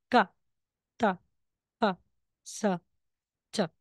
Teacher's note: Kapag double consonant, double na same consonant, tense sound. Walang aspirated, walang hangin.